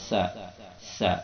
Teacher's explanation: Sin itu berada di ujung lisan yang didekatkan pada ujung gigi seri yang bawah. Sa ya. Dan posisi lisan itu di bawah, tidak diangkat.